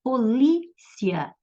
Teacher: Ditongo crescente. Primeiro veio a semivogal I e depois a vogal A. Semivogal soa mais fraco do que vogal, então é ditongo crescente.